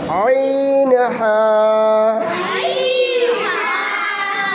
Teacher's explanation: কারো গায়ে লাগে না যেন, উপর দিকে সামনের দিকে দেবা, এইরকম, এই যে এই দিকে উপর। হলকের মধ্যখান হইতে আইন হা। ওইদিকে হা উচ্চারণ কর, হলকের মধ্যখান থেকে না, এই যে এইখান থেকে হবে।